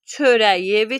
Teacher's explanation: sözün sonunda milli sözlərimizdə, çox hecalı və milli sözlərimizdə k-dan sonra sait varsa, y-ya çevrilir